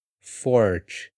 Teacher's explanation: esse forte é mais do interior né ou do interior e ele é mais parecido com o r presente no inglês